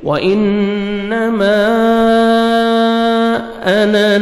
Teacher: الف مدہ کے بعد نیکسٹ کلمہ میں حمزہ آ رہا ہے تو آپ نے مد کرنی ہے، مد جائز 3 سے 4 سیکنڈ ایکسٹرا آپ نے مد کرنی ہے